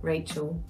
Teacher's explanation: taking that l out and giving it a w